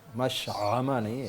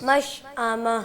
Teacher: حمزہ نہ کھا جایا کریں، حمزہ واضح کریں